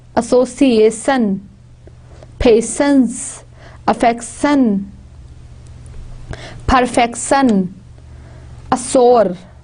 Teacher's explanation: Sh sound is not found. All they are pronounced as s